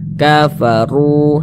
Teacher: huruf ro memiliki harakat damah maka dia dibaca takhim dibaca tebal sehingga pangkalisan kita naik terangkat ke atas ketika Kita mengucapkannya tebalkan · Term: tafkhim